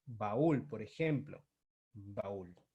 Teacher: la mayor fuerza de voz recaiga sobre la vocal cerrada. Cerrada con tilde. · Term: hiato